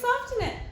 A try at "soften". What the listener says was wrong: It's a silent T, silly. Silent. Silent T.